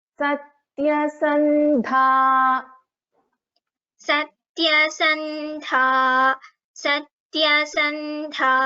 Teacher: Satyasandha, dha is a Mahaprana